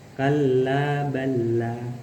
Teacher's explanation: cara membacanya dengan memasukkan huruf yang pertama kepada huruf yang kedua sehingga jadi satu huruf dalam pengucapannya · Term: idgham mutamatsilain